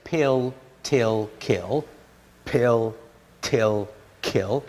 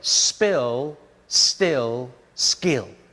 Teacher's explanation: if you notice the P the T and the K lose their aspiration